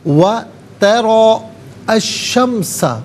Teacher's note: وَتَرَى الشَّمْسَ، ترا کو جب انفرادیت کے ساتھ پڑھیں گے تو ترا، را پر کھڑا زبر ہوگا، اور جب ملا کر پڑھیں گے تو را پر زبر ہوگا، اسے الشمس کے شین کے ساتھ ملائیں گے، درمیان میں سے الف حمزہ کو حذف کریں گے، اور شین حرف شمسیہ ہے۔